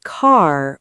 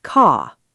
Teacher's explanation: Americans say car with a strong R, and British people say car. · Americans pronounce the R in words like car and water. British people often don't. So Americans say car with a strong R, and British people say caw. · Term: the R sound